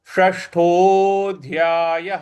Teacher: य के बाद जो विसर्ग है उसके आगे कोई अक्षर नहीं है, इस वजह से विसर्ग का उच्चारण हम ह ले आएंगे। · षष्ठो जो श है, षटकोण वाला, इसमें मूर्ध्वा को जीभ को रोल करेंगे और मूर्ध्वा पे लगाएंगे।